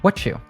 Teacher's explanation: when we combine T plus Y, it morphs into a Ch sound. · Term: sound morphing